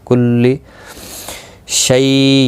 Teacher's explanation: یا لین ہے، تھوڑا نرمی کے ساتھ کھینچ کر ادا کریں گے۔